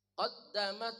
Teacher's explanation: Qaddamat ta desis. Qaddamat. Sedikit aja suara desisnya. Jangan qodamat.